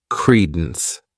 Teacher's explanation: This word has 2 syllables, and the stress is on that first syllable.